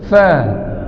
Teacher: Bunyi huruf fa ini bibir bawah dengan gigi.